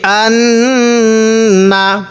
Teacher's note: এই নুনের মধ্যে আমরা গুন্না করব কারণ নুন এবং মিমের উপর তাজদিদ থাকলে সেখানে গুন্না করা ওয়াজিব হয়ে যায় তো এখানে নুনের উপর তাজদিদ আছে এজন্য আমাদের গুন্না করা ওয়াজিব